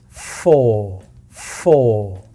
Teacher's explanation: We know we are going to have stress on the first syllable. This is the syllable that's going to carry more energy. · remember to slide down that pitch with the long vowel O.